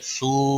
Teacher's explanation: واو مدہ ہے، ایک الف کے برابر کھینچ کر پڑھیں گے.